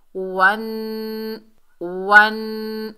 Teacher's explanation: नून मुशद्दद जो है इसमें एक अलिफ की मिकदार गुन्ना होगा। गुन्ना नाक में आवाज़ छुपाने का नाम है। वन वन ऐसे करके पढ़ेंगे।